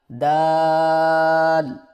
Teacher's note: دال کی ادائیگی میں زبان کی نوک کو سامنے والے اوپر کے دو دانتوں کی جڑ سے لگا کر باریک آواز میں پڑھیں